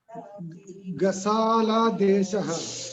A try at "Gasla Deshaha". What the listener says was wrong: Not Gasala, it is Gasla Deshaha. It's Gasla Deshaha. You have to read the word properly. Gasla Deshaha.